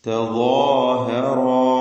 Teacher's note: റാ ളാഹ് അലിഫ് വീണ്ടും റാഹ് അലിഫ് ഇവിടെയൊക്കെ തഫ്കീം കൊടുത്ത് തടിപ്പിച്ച് സ്വരഭാരത്തോടെ ഉച്ചരിക്കുക